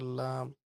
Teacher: জিহ্বার আগার কিনারা সামনে উপরের দাঁতের মাড়ির সঙ্গে লাগাই।